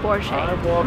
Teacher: Because it's a German name, the stress goes to the first part of the word